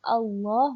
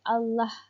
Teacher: lafaz jalalah, ianya ditebalkan sebutannya bukan dilembutkan, iaitu Allah, bukannya Allah.